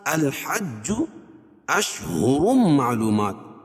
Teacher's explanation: تنوین کے بعد ادغام مع الغنہ کے 4 حرفوں میں سے میم ہے تو یہاں غنہ کر کے پڑھیں گے